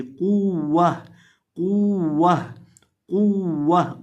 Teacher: अब इस लफ्ज़ के अंदर भी हम इसको कॉफ को मोटा करके पढ़ेंगे, वाव को सख्ती के साथ पढ़ेंगे, और ता के ऊपर अगर वक़फ़ करना होगा तो इसको हाय साकिना से बदल देंगे, क़ुव्वह क़ुव्वह क़ुव्वह, कॉफ को मोटा करेंगे।